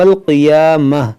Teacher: یہاں قاف حروف مشتعلیہ ہے، اس کو موٹا کریں گے اور اس کو کھینچیں گے ایک الف کے برابر